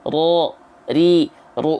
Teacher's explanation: Ro, ri, ru, itu R getarannya banyak. Sedangkan huruf ro, getarannya nggak boleh banyak-banyak karena dia punya sifat takrir.